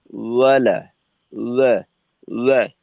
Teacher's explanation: এখানে যদি আমরা অলা বলি, তো সেক্ষেত্রে কিন্তু ওয়াও তার মাখরাজ থেকে উচ্চারিত হয় না।